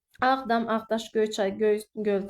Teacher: Ağdam, Ağdaş, Göyçay, Göy, Göl tipli sözlərdə vurğu hər zaman birinci hecanın üzərindədir